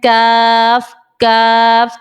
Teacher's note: जबान की जड़ जब तालू के सख्त हिस्से लगे तब काफ निकलेगा